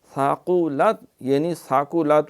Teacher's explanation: قاف جو ہے قلقل موٹا ہے اہتمام کے ساتھ